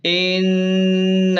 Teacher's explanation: ان، نون الف زبر ن، ان، نون پر مد بھی ہے اوپر تو اسے 3 الف کے برابر کھینچ کر پڑھیں